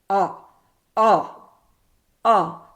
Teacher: آواز جو ہے سکڑنے سے اور زبان پیچھے کو جاتی ہے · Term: آئین کی آواز